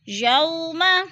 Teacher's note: وولین کو ہم لمبا بھی نہیں کریں گے اور جھٹکا بھی نہیں دیتے، آرام سے ادا کرتے ہیں